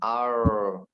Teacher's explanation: Huruf ra, ujung lidah digusi ya. Jangan masukin.